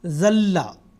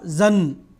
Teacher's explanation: اب یہ جب اس کا ادغام ہوگا لام میں ہوگا، ذلّا اصل میں کیا تھا، زن، نون کی آواز تھی آخر پہ، مگر آگے لام آیا ہے جو کہ حروف یرملون میں سے ایک حرف ہے، تو جو نون ساکن کی آواز ہے وہ لام میں بدل جائے گی۔ اس کو کہتے ہیں ادغام، نون ساکن اور تنوین کا ادغام۔